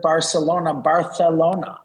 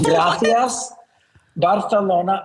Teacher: everything that's got an S sound has a TH sound to it now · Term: lisp